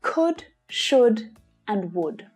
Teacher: the L in all of these three words is silent. Don't try and pronounce that L.